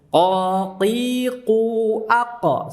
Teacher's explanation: Qa terbuka tanpa memonyongkan kedua bibir. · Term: fathah